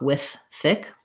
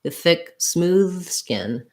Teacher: You can almost just do one TH sound, with thick, with thick. I don't have to really stop with thick. I can, but I can run them together.